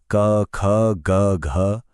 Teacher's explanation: आप खुद बोलकर महसूस कर सकते हैं कि आवाज की शुरुआत बिल्कुल गले के अंदर से हो रही है। · कंठीय ध्वनियां सीधी गले से निकलती हैं